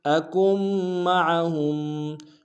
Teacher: اذ لم اکم معہم، اکم معہم، اکم میں کاف کو میم کے سامنے لانا ہے، میم کے اوپر تشدید زور دیں گے اور عین کو کھڑائی سے ادا کریں گے